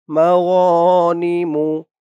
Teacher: মা এক আলিফ টান জবরের পরে খালি আলিফ